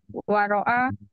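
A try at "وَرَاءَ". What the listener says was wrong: Cara bacanya, roknya pendek tadi. Roknya pendek, waro'a.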